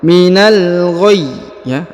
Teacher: huruf ya di ujung diberikan penekanan 2 harokat ya. Minal ghayy ya, ada penekanan karena terdapat tanda tasdid di ujung ya.